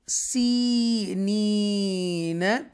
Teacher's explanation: یہ بھی یا مدہ ہے، اور یہ بھی یا مدہ ہے، دونوں کو یا جو ہیں اس کو ہم سٹریچ کر کے پڑھیں گے، کھینچ کر پڑھیں گے